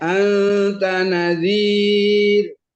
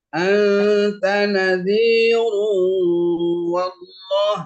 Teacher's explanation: Kalau di wakaf dibaca tipis. Ya. Anta nadhir. Kalau di wasol dibaca tafkhim.